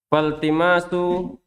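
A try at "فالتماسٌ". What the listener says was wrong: Tanwin.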